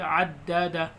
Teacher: تشدید ہے، سختی کے ساتھ پڑھیں گے اس کو، جھٹکا دے کے